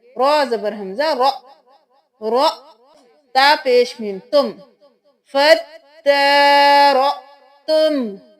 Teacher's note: یہاں پہ حمزہ پہ جزم ہے تو ہم جھٹکا دیکھ کے پڑھیں گے